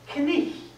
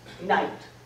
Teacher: Chaucer pronounced the K. He pronounced that GH as a kind of explosion of breath. Knicht. And the vowel in the middle is ich.